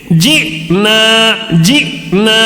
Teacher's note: حمزہ ساکنہ ہے، اس کا جھٹکا ہو رہا ہے، دوسرا الف مدہ ہے